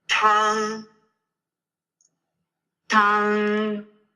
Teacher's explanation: tang kind of starts with a very aspirated sound. So this T has to be, you kind of have to push the air through.